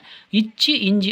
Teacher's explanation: நாவின் இடைப்பகுதி நடு அண்ணத்தின் இடைப்பகுதியை பொருந்துவதால் பிறக்கின்றன